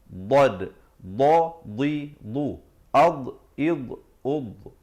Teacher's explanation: Dod makhrajnya di tepi. Tepi lidah sama ada kanan ataupun kiri. Kalau tepi kanan, bawakan ke kanan.